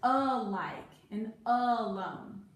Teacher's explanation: the a is making the short u sound and it's not at the end of the word it's at the beginning